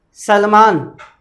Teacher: जीभ जो है आपकी दांत के टच हो रही है, इसका मतलब है सलेट वाला बोल रहे हो आप वहाँ पर।